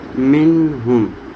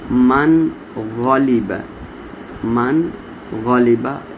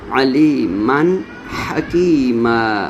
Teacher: اظہار کا مین ظاہر ہونے سے، یعنی نون کو واضح کر کے اپنے مخرج سے ادا کرتے ہیں